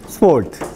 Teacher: No se mueve. Entonces, cuando se dice sport, oclusiva bilabial, sin aspiración, no aspirada